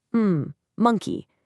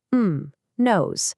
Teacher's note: You can literally feel how the sound vibrates right in your nasal cavity. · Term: nasal sounds